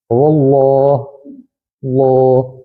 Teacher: اس کو کہتے ہیں تفخیم، یعنی موٹا کر کے پڑھنا۔ اردو میں کہتے ہیں موٹی آواز نکالیں گے۔